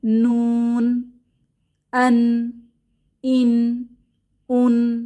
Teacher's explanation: নুনের মাখরাজ জিহবার আগা উপরের পাটির দাঁতের গোড়ায় লাগে এবং আওয়াজটা নাকে চলে যায় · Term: গুন্নাহ